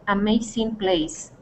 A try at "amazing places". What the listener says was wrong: Okay, and that would be Amazing Places, okay, with the S at the end. Places. Try that.